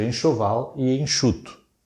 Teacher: E o N, que aqui, na verdade, na fonética não corresponde ao fonema N, mas a um som nasal, que eu acrescento ao E, é um dígrafo vocálico, por exemplo.